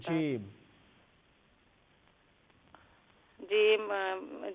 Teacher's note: जीम वस्ते ज़बान वस्ते तालु से